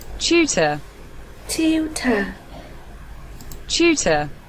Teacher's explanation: tutor, nhấn âm tiết số 1